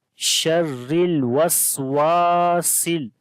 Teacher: میو شر، را کو باریک پڑھیں گے، را کے نیچے زیر ہے اس وجہ سے. واو کو لمبا کریں گے، الف مدہ ہے، الف سے پہلے زبر آ گئی واو کے اوپر، لمبا کریں گے ایک الف کے برابر. شر الوسواسل، سین کو لام کے ساتھ ملائیں گے.